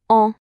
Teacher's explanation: En fait, c'est comme si on prononçait un A tout en laissant l'air passer un peu par le nez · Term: voyelle nasale